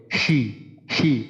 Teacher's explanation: শিনটা যখন আমরা উচ্চারণ করব আমাদের মুখ থেকে প্রচুর পরিমাণে বাতাস বের হবে